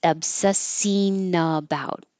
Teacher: And this, everybody's been obsessing about the. Instead of obsessing with the ing in the back, ing, to make it connect to the following vowel easier, you can change that to an een.